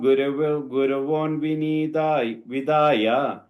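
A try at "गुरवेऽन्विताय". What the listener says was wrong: That word, right, in second line, it's a Gurave Anvitaya, but that S symbol is coming there. So Guravenvitaya, one word.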